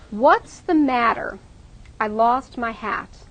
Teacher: in those first two sentences we're going to stress what matter lost hat